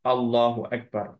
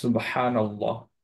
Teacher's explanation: লামে হেভি হবে শুধু লাফজুল জালালার ক্ষেত্রে আল্লাহ সুবহানাতায়ালার নামের ক্ষেত্রে ওইটা যখন পড়ছি তখন তার সামনে যদি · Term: লামটাকে হেভি